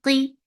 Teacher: give a short sound qi, and make qaf heavy